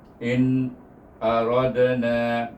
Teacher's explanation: letak lidah kita pada mahraj nun, stop situ dan sambung kepada a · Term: izhar nun